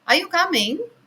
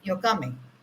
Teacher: When there is a question, there is a rising tone, and your coming is a statement that we are giving. So whenever we are stating something, definitely the tone falls down. It's like, "Are you coming?" Or when you are, stating a fact, it's like, "You're coming." So there is a fall, definitely.